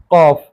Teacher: ज़बान की जड़ को हम हिलाएंगे और ज़बान की जड़ ऊपर कौवे से मिल रही है, लहात जिसे कहते हैं।